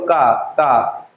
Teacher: कंठ, किसी को टच नहीं किया, डायरेक्ट बाहर निकल गया, कंठ से आया,